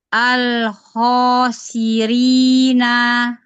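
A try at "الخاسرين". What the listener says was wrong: Naknya jangan panjang.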